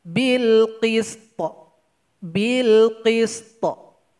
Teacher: jangan lupa memberikan qalqalah kepada huruf to